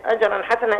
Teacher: الجيم مقلقله اه والراء مفخمه ولو وقفنا عليه يبقى مده عوض تمام ام طيب اجرا حسنا التنوين بعده حاء حسنا الح الحاء